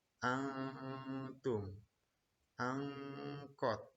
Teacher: Cara membacanya yaitu menyamarkan bunyi nun atau bunyi nun sukun atau tanwin seperti bunyi n menjadi eng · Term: ikhfa